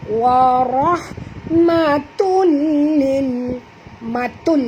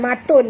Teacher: Tanwin bertemu dengan lam, kena masukkan bunyi tanwin ke dalam lam ya, tanpa dengung, idgham bila gunnah ya.